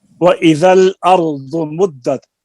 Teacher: रा पुर है क्योंकि माक़बल मफ्तूह है